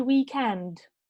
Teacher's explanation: is about the stress okay so normally we say weekend so when we say weekend the stress would be on the second syllable